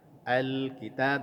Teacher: lamnya sukun tidak boleh dikolkolahkan. Alkitab tidak boleh tetapi alkitab alirkan sedikit bunyi lamnya.